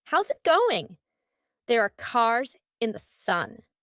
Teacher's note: In each of these words, the S becomes a Z.